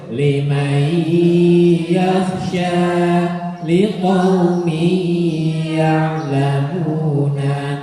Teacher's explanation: Nun sukun atau tanwin bertemu ya dibaca dengung, namanya idgham birrunnah.